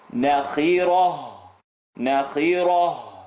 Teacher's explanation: Ra is heavy. We're going to take the ta and make it into a ha sukoon.